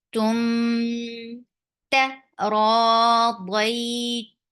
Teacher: you're hiding the sound of meme and you're keeping the sound in your nose. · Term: ikhfa shafawi